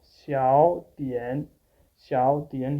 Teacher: Xiao is having a second tone, a rising tone in speaking, as this is a rule that if one third tone syllable is following by another third tone syllable, then the first third tone syllable will change into the second tone and the second third tone syllable will remain at its own place. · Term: third tone rule